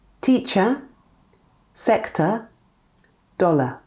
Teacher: When the vowels E, O, and A are followed by an R, we will often, but not always, use a schwa.